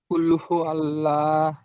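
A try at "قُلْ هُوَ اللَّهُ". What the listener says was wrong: আল্লাহ নয়। ওয়াও আছে ওয়াও লাম জাবার ওয়াল।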